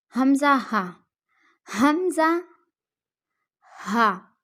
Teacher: حلق کے آخر سے جو سینے کی طرف ہے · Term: اقصائے حلق